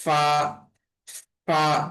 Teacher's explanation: ফা এর উচ্চারণটা হবে নিচের ঠোটের পেট উপরের দাঁতের আগার সঙ্গে লাগাইয়া। অর্থাৎ এভাবে উপরের ঠোট দিয়ে নিচের ঠোটটাকে এভাবে কামড় দিব।